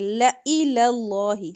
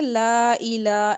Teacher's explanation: لَإِلَى اس کو لا کو لمبا نہیں کریں گے. لام کے اوپر زبر ہے. · اس کو لا کو لمبا نہیں کریں گے. لام کے اوپر زبر ہے. حمزہ ہے جو لام الف ہے نا الف کے نیچے زیر ہے تو اس کو لئی پڑھیں گے.